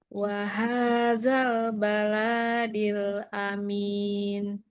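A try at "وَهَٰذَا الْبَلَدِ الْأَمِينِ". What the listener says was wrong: Bala tidak ada tanda panjang. Jangan wahadal karena hanya yang panjang. Waha. Baladil. Kan lanya pendek. Baladil.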